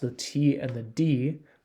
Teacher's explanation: if you contrast the T and the D the difference is voicing uh voicing refers to the vibration of your vocal cords when